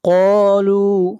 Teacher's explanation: قاف کو کھینچ کر پڑھیں گے ایک الف کے برابر، یہاں پر الف مدہ ہے۔ قالوا، لو کو بھی کھینچ کر پڑھیں گے ایک الف کے برابر، یہ واو مدہ ہے۔